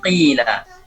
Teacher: yang paling kurang tafkhimnya adalah pada saat maksur, seperti qila. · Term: al-maksur